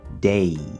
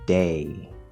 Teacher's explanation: That doesn't sound right. So the end of this diphthong sounds kind of like E, but that's too high. You want to end at the second vowel sound, A, day. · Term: diphthong A